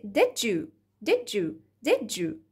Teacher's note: ج اللي هو اصلا بالمناسبة صوته افريكت، من الافريكتس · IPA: /dɪʤuː/